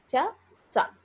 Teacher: ఇప్పుడు మనం చూసుకున్నట్లయితే తాళవ్య చకారము అనే దానికి తాళవ్య చకారము, తాళవ్య జకారము అనేవి పలికేటప్పుడు కేవలం తాళువుల దగ్గర మాత్రమే నాలుక తగులుతోంది చ. కానీ దంత్య చకారాన్ని పలికేటప్పుడు తాళుతో పాటుగా దంతాలకు కూడా తగులుతూ ఉంది